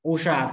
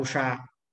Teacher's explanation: एक में रस्व उ है तो एक में दीर्घ उ है